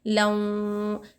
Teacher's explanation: वाऊ को लऊं बोल के गुन्ना कर रहे हैं हम